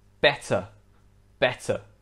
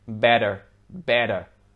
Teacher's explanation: so if you want to sound more british make sure you're pronouncing the t between two vowels and not like a d in american english · For example, in British English, this word would be pronounced better, better. Whereas in American English, the two T's sound more like a D, like better, better.